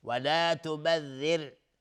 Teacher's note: وابن السبیل ولا تبذر تبذیرا. دقت کنید، ولا تبذر اینجا را ساکنه قبلش کسره اومده و را ترقیق، حکمش ترقیقه